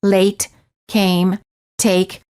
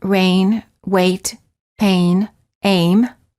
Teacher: the lips are not rounded and they are relaxed and the tongue is tense moving from mid-high position to high position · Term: a as in take